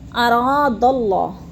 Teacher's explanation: اراد اللہ، اور را کو تھوڑا سامنے کھینچ کے پڑھنا ہے، الف مدہ ہے، اور اللہ کی اللہ بھی پر پڑی جائے گی، کیونکہ اللہ سے پہلے لفظ دال کے اوپر زبر ہے تو اللہ کو پر کر کے پڑھیں گے